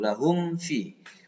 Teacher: banyak yang mim ketemu fa nggak mingkem, mesti harus mingkem dulu.